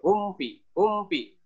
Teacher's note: Izhar syafawi jelas di bibir. Jelas. Izhar jelas syafawi bibir.